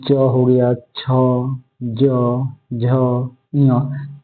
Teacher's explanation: तो च वर्ग का देखिए तालु होता है।